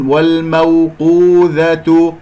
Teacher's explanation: قاف مفخمة مرتبة ثالثة مضمومة، أضم الشفتين فيها وفي الواو